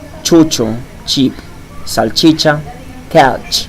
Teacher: the sound CH exists in Spanish and it's even stronger than in English